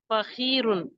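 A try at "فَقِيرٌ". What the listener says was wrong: की फकीरुन। की नहीं होगा ना, की आपकी जबान की जड़ ऊपर ले जाके नरम तालू से मिलाए और फिर कहे की। की नहीं होगा ना बेटा, की फकीरुन। आप जो जबान का जो हलक का स्टार्ट वाला है वहां उंगली रखे, ठीक। रखा। आप कहे फकी फकी की जबान को ऊपर ले जाए, पीछे वाले।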